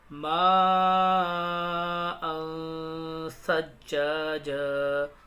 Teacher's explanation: تنوین کے بعد ثا رہا ہے، حروف اخفا کے 15 حروفوں میں سے، اس لیے غنہ کریں گے